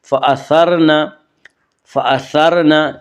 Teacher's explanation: یہاں را ساکن سے پہلے سا کے اوپر زبر ہے، اس سے را ساکن کو پر پڑھیں گے۔